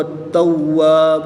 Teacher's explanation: تا پر تشدید ہے، واو پر بھی تشدید ہے، تو ان دونوں کو خوب ظاہر کر کے پڑھیں گے